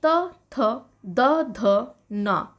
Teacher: जब हम इन वर्णों को उच्चारण करते हैं तो हमें दांतों की सहायता लेनी पड़ती है। जो ध्वनि है वो दांतों से होकर निकलती है, इसलिए इनका उच्चारण स्थान दंत है।